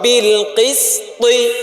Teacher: দুই মোটা হরফের মাঝখানে সিন পাতলা পড়ে গেছে, এজন্য দুইটা মোটা করে মাঝখানেরটা পাতলা করতে হবে।